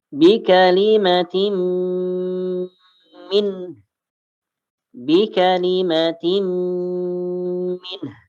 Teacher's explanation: Tanwin bertemu dengan mim, dimasukkan bi kalimatin min dan ditahan 2 harakat.